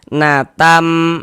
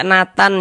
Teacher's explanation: bunyi nun sukun atau bunyi tanwinnya itu diidgamkan dimasukkan ke dalam huruf idgham ghunahnya. Kemudian disertai dengan ghunah didengungkan